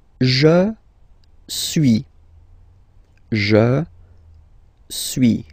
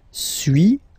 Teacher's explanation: So first one, suis, as you've been noticing, you don't pronounce the final S